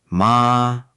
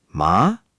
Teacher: the first tone high and flat and the second tone rising like a question